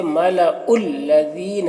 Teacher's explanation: یہاں پر یا ساکن سے پہلے ذال کے نیچے زیر ہے، یا مدہ ہوا، اسے ایک الف کے برابر کھینچ کر پڑھیں گے